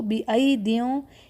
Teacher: اس میں بِأَيْدٍ کا ورڈ دیکھیے، یہاں پر ایک یا ساکن ہے، یعنی جو حمزہ کے بعد یا آ رہی ہے وہ ساکن ہے، لیکن دوسری یا حذف ہے، لکھنے میں موجود ہے لیکن پڑھنے میں نہیں آئے گی